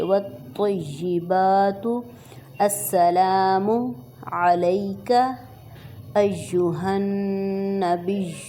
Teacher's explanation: نون پہ غنہ کریں گے، اس کو تھوڑا سا کھینچ کے ناک میں آواز اس کی کھینچیں